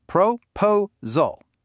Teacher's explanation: The stress is in the middle. Proposal. That means the first syllable pro and the last syllable saul are unstressed. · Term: weak, strong, weak